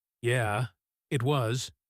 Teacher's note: agrees with a falling voice.